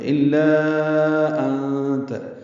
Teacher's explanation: الا، حمزہ کو لام سے ملانا ہے، لا الف مدہ ہے، آگے حمزہ ہے تو لا پہ مد آئے گی، مد منفصل چھوٹی مد ہے۔ الا انت، انت میں نون ساکن کے بعد تا آنے کی وجہ سے اخفا ہوگا، نون کی آواز چھپائیں گے۔